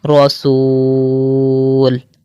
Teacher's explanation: واو مدہ کے بعد یہ لام جو ہے وہ ساکن ہو رہا ہے تو یہاں پر ہم تین الف کی مقدار کھینچ کر پڑھیں گے